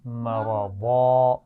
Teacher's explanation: دو زبر ہے نا، تو وقف کرتے ہوئے ہم کیا کریں گے؟ اس کو الف مدہ سے اس کی آواز بدل کر پڑھیں گے